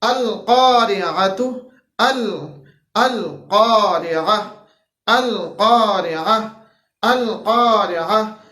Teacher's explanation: اب یہاں پہ دیکھیے القارعہ کے اندر سب سے پہلے ہمارے پاس حمزہ ہے، اس کے بعد عین ہے، القارعۃ، القارعہ، القارعہ، القارعہ۔ حمزہ ہے جو کہ ہمارے پاس اقصا حلق سے ادا ہوتا ہے، پھر اس کے بعد عین ہے جو کہ ہمارے پاس وسط حلق سے ادا ہوتا ہے، پھر اس کے بعد مل قارعہ، مل قارعہ، مل قارعہ، عین آ گیا جو کہ ہمارے پاس وسط حلق سے ادا ہوتا ہے۔